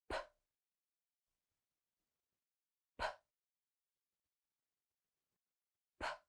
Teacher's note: No vibration in the throat. You're just going to push out the air with your lips. No sound. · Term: unvoiced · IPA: /p/